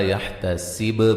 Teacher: با پہ قلقلہ وقف کی صورت میں قلقلہ کو واضح کریں گے